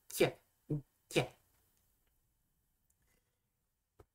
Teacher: Avec, sûrement pour cette dernière, des variations donc, entre une labiale, donc quoi, prononcer du coup le que, mais avec les lèvres en même temps, donc quoi, et sûrement une palatale, donc qui est prononcée avec le palais, donc plus proche d'un y